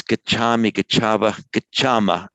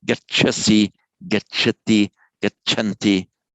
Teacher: In the first person endings with these verbs, it's gachami, gachava, gachama, always lengthened. whereas with the other persons, it's not lengthened.